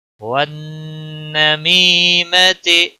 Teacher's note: نون مشدد پر غنہ ہوگا، می یا مدہ ہے، 1 الف کے برابر کھینچ کر پڑھیں گے.